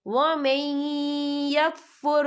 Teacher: یا دیکھیں وَمَن، یہاں نون ساکن ہے، نون ساکن کے بعد جو ہے یا آ رہا ہے، اور یا جو ہے حروف ملون میں سے ہے تو یہاں پر ادغام ہوگا، تو ہم اسے تھوڑا سا غنّے کے ساتھ پڑھیں گے